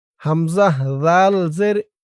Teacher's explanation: জালের উচ্চারণটা একদম নরম হবে জিহ্বার মাথা উপরের দাঁতের মাথার সাথে লাগবে